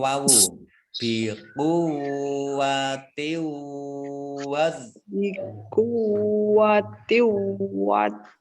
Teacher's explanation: Ini juga tak kasroh tanwin bertemu dengan huruf wawu, ini bacaan idgham bi gunnah. Idgham masuk bi dengan gunnah mendengung.